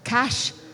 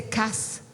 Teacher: Instead of cash, the child may say cas. The sh sound cannot be pronounced